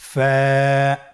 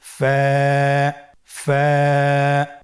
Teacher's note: ফায়ের মাখরাজ হলো নিচের ঠোঁটের প্যাড সামনের উপরের দুই দাঁতের আগার সঙ্গে লাগিয়ে উচ্চারিত হয়।